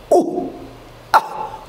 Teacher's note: at the time of glottal stop, it is blocked and suddenly open.